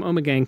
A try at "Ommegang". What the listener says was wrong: No N. It's Ommegang. Not Ommegang.